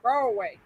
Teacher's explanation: I know a lot of people that say Broadway. They don't even pronounce the D.